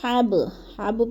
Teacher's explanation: فی جیدہا حبل، حب، حب پہ جو ہے ادھر با ساکن ہے، حروف قلقلہ میں سے ہے، تو ادھر قلقلہ کرنا ہے